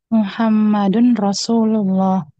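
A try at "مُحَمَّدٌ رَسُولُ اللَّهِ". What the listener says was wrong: Ya, coba dibaca harokat akhir-akhirnya. Ya, Muhammadun Rasulullah.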